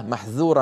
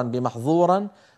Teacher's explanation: ولو نطقناها مطبقة مفخمة لصارت محظورة فغيرت المعنى